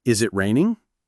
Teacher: the pitch generally rises towards the end, often with a noticeable lift on the last stressed syllable or the very last syllable, raining. This rising pitch signals question. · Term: Yes-no question intonation, rising